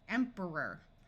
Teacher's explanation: both of these syllables sound like ER because o r at the end of a word usually sounds more like er instead of or